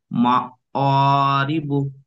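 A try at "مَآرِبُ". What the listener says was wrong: ফের মুখটা গোল হয়ে যাচ্ছে, মা অ হয়ে যাচ্ছে। মা আ, আ। হামজার উচ্চারণ সবসময় মুখ খুলে গালের মধ্যিখান থেকে আওয়াজটা বেরোবে। মা আ।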